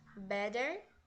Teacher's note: quando a gente fala no inglês americano pode ser tanto beder né com uma pronúncia de D ou better com som de R